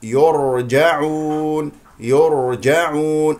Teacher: الراء هنا مستقره لا لا تقلقل او تحركها من مكانها